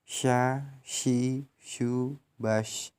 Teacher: Melafalkan huruf sya keluar dengan menyentuhkan tengah lidah dengan langit-langit. Diucapkan mengalir udaranya dan nafasnya, yakni sya, shi, shu, bash, atau juga shu, shan, shani, shashna.